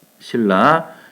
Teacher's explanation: 뒤에 오는 리을 때문에 앞에 오는 니은 요놈이 리을로 요렇게 바뀌게 되죠